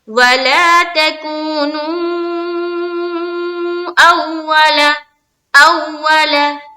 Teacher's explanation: इस वाव मद्दा को हम ज्यादा खींचेंगे क्योंकि इसके ऊपर क्या आ गया, मद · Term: मद मुनफसिल